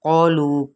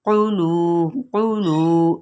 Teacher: क़ौफ की पेश को लंबा नहीं करेंगे, ना ही मजहूल पढ़ेंगे कि क़ौलू पढ़ दें या फिर कुलू बारीक काफ कर दें, नहीं, माना चेंज हो जाएगा।